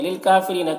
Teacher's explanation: للکافرین، کاف میں کھڑا زبر ہے ایک الف کے برابر کھینچیں گے۔ را کو باریک پڑھیں گے، یا مدہ ہے ایک الف کے برابر کھینچیں گے